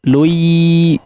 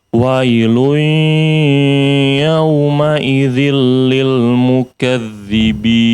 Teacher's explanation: dari khayshum ya, dari hidungnya dikeluarkan ya. Bukan lui hanya di mulut saja suaranya ya.